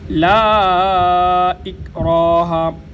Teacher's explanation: لا کے اوپر جو مد ہے 3 الف کی مقدار اس کو لمبا کیا جاتا ہے۔ لا یعنی جتنا وقت 3 دفعہ الف الف الف پڑھنے میں لگتا ہے اتنا ہی وقت اس لا کو لمبا کرنے میں لگنا چاہیے۔